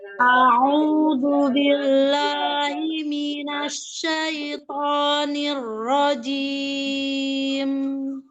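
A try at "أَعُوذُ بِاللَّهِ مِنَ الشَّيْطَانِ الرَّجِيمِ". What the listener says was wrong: Iya, tidak diseret sai, tapi tafasyinya dikeluarkan. Tafasyinya sempurnakan hembusannya.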